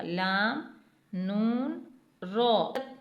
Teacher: अगले तीन हरूफ हैं लाम नून रो, लाम नून रो ज़बान के किनारे ऊपर वाले दांतों के मसूड़ों से अदा होते हैं, यानी जब ज़बान का किनारा ऊपर के मसूड़ों से लगेगा लाम नून और रो अदा होगा